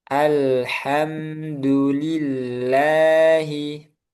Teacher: Kemudian ee selanjutnya keadaan lam yang ada pada lafaz jal Allah di mana lam dibaca tipis. Yaitu sebelumnya ada huruf yang berharakat kasrah.